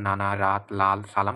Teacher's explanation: দাঁতের মূলের সাথে বা দন্তমূলের সাথে স্পর্শ হয়, স্পর্শ হয়ে বায়ুর বাধাপ্রাপ্ত হয়। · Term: দন্তমূলীয়